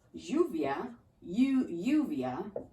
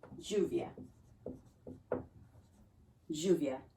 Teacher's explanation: That double L, you can make it sound like a Y, lluvia, lluvia, or like a J. I like, and neither, they're both actually right, this sounds, but I like to make it sound like a J, lluvia.